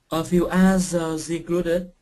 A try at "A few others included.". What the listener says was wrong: Oh, be careful with the TH. A few others included.